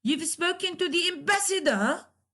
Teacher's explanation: At the end of the sentence, you raise your tone. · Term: rising tone